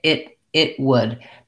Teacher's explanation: They don't really do it with a pronounced T, it would, because that's harder to combine. So they stop the air for the T and go right into the W.